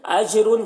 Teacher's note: اجرن جیم میں قلقلہ کرنا ہے